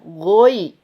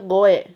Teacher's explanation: go tebal, ya tipiskan